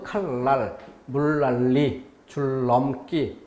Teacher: 리을이 앞에 나오고 니은이 뒤에 놓이는 경우도 뒤에 것이 바뀌어서 니은이 리을로 칼날, 물난리, 줄넘기 이렇게. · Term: 유음화